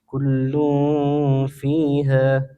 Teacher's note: Tanwin bertemu fa, hukumnya ikhfa dibaca samar dan dengung.